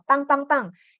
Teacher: You pronounce it strong but not aspirated. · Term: double consonant P